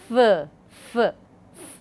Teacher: There is almost blocking, and then after that air is pushed through a narrow opening. So, blocking almost, then there is a narrow opening. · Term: fricatives